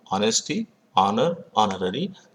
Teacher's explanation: Honesty, honor, honorary begin with H, but the letter H is silent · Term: silent letter H